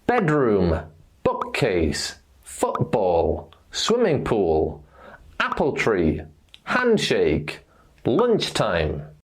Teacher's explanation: when this happens in a word or in two words like apple tree we stress the first noun